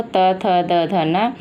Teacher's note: ये दांत को स्पर्श करते हुए उच्चरित होते हैं, इसलिए दंत वर्ण कहते हैं।